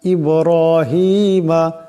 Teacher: বা সাকিন বা কলকলার হরফ, আওয়াজে দুটি টক্কর খাবে